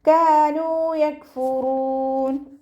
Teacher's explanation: കാഫിൻ്റെ കൂടെ അലിഫ് മദ് വന്നു. 2 കൗണ്ട് നീട്ടി കൊടുക്കുക. നൂനിൻ്റെ കൂടെ വാവ് മദ്ദാണ് വന്നിട്ടുള്ളത്. · നൂനിൻ്റെ കൂടെ വാവ് മദ്ദാണ് വന്നിട്ടുള്ളത്. 2 കൗണ്ട് നീട്ടി കൊടുക്കുക